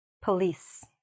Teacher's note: The important thing is not to say the O like an O. Just shorten it